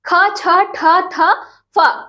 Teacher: जब आप एक बार अंतस्थ देख लीजिए तो अब देखिए महाप्राण, महाप्राण बताया ना, जिसको बोलते समय, उच्चारण करते समय अंदर से क्या होती है, प्राण वायु ज्यादा निकलती है